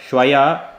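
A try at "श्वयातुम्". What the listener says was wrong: Shwa plus Yatum. Shwa Yatum. Shwa plus Yatum. It's not Shwaya, it is Shwa plus Yatum.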